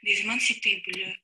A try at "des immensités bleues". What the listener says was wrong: Des immensités. Тут на «ы» похоже было немножко. Слышите это? Des immensités bleues, а здесь не очень четко было. Видите, как-то вот этого ощущения, что что-то было так прожевано, не должно создаваться.